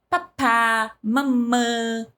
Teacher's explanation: Porque a nossa fala ela começa a ser construída, eu sempre digo, de fora para dentro. Então nós começamos com fonemas bilabiais, que é papá, mamã